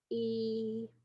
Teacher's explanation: if you produce e, you know that it's a front vowel